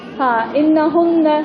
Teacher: پھر اس کے بعد ہے خیشوم. خیشوم یعنی ناک، یعنی ناک سے غنہ کر کے نکالتے ہیں